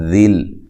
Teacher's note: لام کو باریک پڑھنا ہے اور ہلانا بھی نہیں ہے